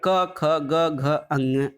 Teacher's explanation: तो सही उत्तर है क और ख, ये कंठ ध्वनियाँ हैं। कंठ और निचली जीभ के स्पर्श से बोले जाने वाले वर्ण कंठ कहलाते हैं।